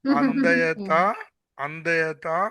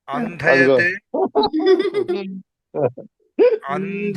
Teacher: మళ్ళీ మా అల్ప ప్రాణానికి వచ్చేసారండి, మహాప్రాణం నుంచి.